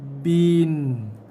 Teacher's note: Kemudian jaga dia bunyikan dulu baris bawah tu dengan satu harakat dulu, kadar satu harakat, baru masukkan N